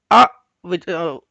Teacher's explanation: ಇಲ್ಲಿ ಕಂಠದ ಹತ್ರ ಗಂಟಲ ಹತ್ರ ಇಲ್ಲೊಂದು ಕಡೆ ಹಿಡಿದಂಗೆ ಆಗುತ್ತೆ ಮತ್ತೆ ಸ್ವಲ್ಪ ಶ್ರುಂಕ್ ಆಗುತ್ತೆ ಅದು ಪ್ರೆಸ್ ಆಗುತ್ತೆ ಅ ಅಂತ ಉಚ್ಚಾರಣೆ ಮಾಡುವಾಗ ಅದೇ ಹ ಹೇಳುವಾಗ ಪೂರ್ತಿ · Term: ಅಕಾರ